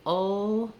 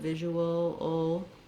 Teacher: it ends with a dark L with a schwa sound before it. Because I'm moving from the oo, the rounded sound, to the unrounded schwa, ooal, you can hear how there's a little bit of a W gliding happening there.